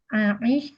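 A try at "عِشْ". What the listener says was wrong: Ish, bukan Aish. Kalau hiduplah, berarti Ish bil Ish.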